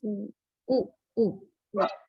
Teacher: Oo is a back vowel means the back part of the tongue is moving. That's why we say it's a back vowel. · When we produce the vowel oo, our tongue is quite close to the hard palate.